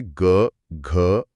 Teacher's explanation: इन्हें बोलते समय गले में एक भारीपन और गूंज महसूस होती है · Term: सघोष